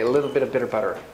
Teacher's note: When you have like a T before an unstressed syllable, in North American, it sounds kind of like a D, like a little bit of bitter butter.